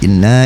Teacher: nun bertasydid wajib gunah